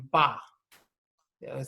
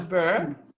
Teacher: you've got to actually use your lips to sound out the letter M in front of the B